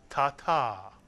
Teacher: Remember, the accent tends to be placed on the last syllable, ta-ta.